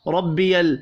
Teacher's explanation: مدہ ایک الف کے برابر کھینچ کر پڑھا جائے گا، ربی را کو زبر کی وجہ سے پر پڑھیں گے